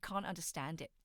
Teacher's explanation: I didn't pronounce the T in can't and um I did a glottle stop um with the it and it's all one continuous stream, right?